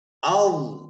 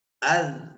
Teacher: ضو کو موٹا کریں گے ذال کو باریک